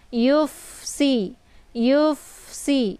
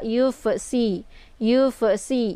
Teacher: fa ini desis anginnya agak sedikit samar ya, tapi dialirkan bukan cara dipantul ya.